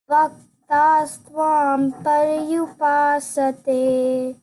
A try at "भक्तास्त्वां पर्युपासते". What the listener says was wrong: BHA. So the sound was like bha, not ba.